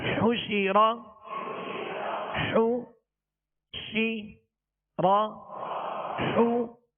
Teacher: حا پر پیش ہے، اس کی ادائیگی میں ہونٹوں کو کامل گول کریں گے. شین کے نیچے زیر ہے، آواز کو گرا کر، اور زبر را پر ہے تو آواز اور منہ دونوں کھول کر اس کو ادا کریں